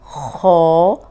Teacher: خا موٹا حرف ہے، اس کو ہونٹ گول نہیں ہوں گے، اس کو موٹا پڑھیں گے۔